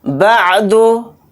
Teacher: बा को आइन साकिन के साथ मिलाकर पढ़ेंगे